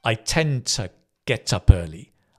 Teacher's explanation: Often in English, the to becomes to because we stress tend and we stress the next verb